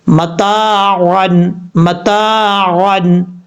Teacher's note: عین دو زبر عن، عین کو آپ نے مخرج سے ادا کرنا ہے، حمزہ کی آواز نہیں آنی چاہیے · تا کے بعد الف ہے، الف مدہ، ایک الف کی مقدار لمبا کریں گے